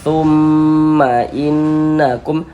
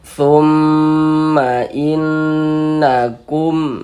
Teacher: bagian thumnya itu suaranya itu kita tahan, kita panjangkan sejenak ya. Kita panjangkan sebentar, kita genahkan. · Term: ghunah musyaddadah